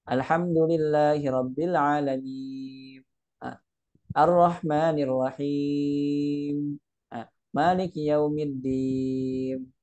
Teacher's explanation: dia buru-buru untuk menempelkan bibirnya sehingga nunnya berubah menjadi Mim